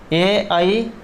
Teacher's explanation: ए आई, तो इनका जो उच्चारण स्थान है ये कंठ और तालु रहेगा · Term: कंठतालु